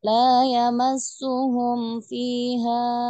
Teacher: Di sini juga tidak ditahan ya, mim sukun bertemu dengan huruf fa izhar syafawi ya.